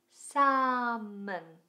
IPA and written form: sæmən (Salmon)